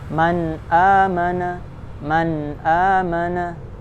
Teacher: dibaca jelas nun dan tanwinnya sesuai makhraj tanpa menambah dengung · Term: izhar halqi